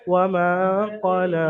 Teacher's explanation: কফের উপর হারাকাত, আর লামের উপরে দেখেন খালি ইয়া এসছে, ইয়াটা পরে আসবে না, লেখায় এসেছে লাম খারা যাবার লা পড়বেন, লাম খারা যাবার, খারা যাবার আলিফ মাদ্দার সমতুল্য, অর্থাৎ লামকে আলিফ মাদ্দার মতো এক আলিফ পরিমাণ টান দিয়ে পড়তে হবে